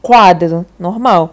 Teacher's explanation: Porque eu tenho uma semivogal mais vogal, né? Eu vou do mais fraco para o mais forte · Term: ditongo crescente